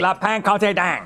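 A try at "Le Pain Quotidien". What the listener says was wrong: It's pan. You don't pronounce the N.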